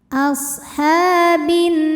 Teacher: Karena alif lam menghadapi huruf syamsiyah yaitu nun. Maka alif lam tidak kita baca atau kita masukkan langsung ke nun. Alif lam syamsiyah biasa disebut idgham syamsi.